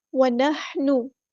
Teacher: ہا کو وسطی لیکن زور سے ادا کرنا ہے